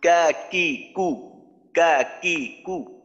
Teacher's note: কা কি কু, এই যে উচ্চারণ করলাম, এখানে বাতাস বের হবে না